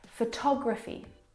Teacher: photography you can hear the pronunciation is different and that's because the second syllable is the stressed syllable in this word photography